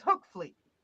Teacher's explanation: you pronounce the G like a k and the V like an F